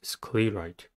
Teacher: Sclerite has two syllables and the stress is at the first one. The first syllable is sclear.